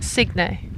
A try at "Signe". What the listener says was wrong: Signe, actually. It's not a hard G. It's Signe.